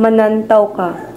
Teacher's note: usually with a rising intonation